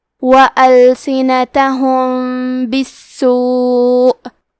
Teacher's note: کلمت بالسوء میں سین پہ تشدید ہے تو ہمیں 2 حرف کے برابر سین کو پڑھنا ہے، کیونکہ تشدید کی اصلیت 2 حرف ہے. · ہم میم ساکن کو چھپاتے ہوئے اور غنہ کے ساتھ یہ حکم کو ادا کریں گے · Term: اخفاء